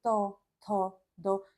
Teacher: की ओर को मुड़ रही होगी फिर आता है त वर्ग त वर्ग का उच्चारण स्थान दंत · त वर्ग का उच्चारण स्थान दंत्य है, यानी कि जब आप इसे बोलेंगे त, थ, द, तो दंत्य मतलब दांत, तो दांतों को स्पर्श करते हुए जीभ हवा बाहर निकलेगी।